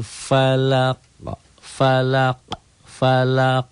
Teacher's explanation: Falaq dikolqolah ya itu ada pantulan ya